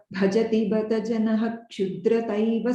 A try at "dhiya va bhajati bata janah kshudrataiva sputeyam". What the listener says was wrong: the pause is after janaha.